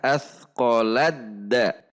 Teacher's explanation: huruf ta sukun benar-benar dilebur sifatnya kepada huruf dal. Sehingga kita cara membacanya adalah athqaladda. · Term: idgham